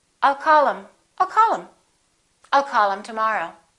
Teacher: instead of saying call him we'll drop the h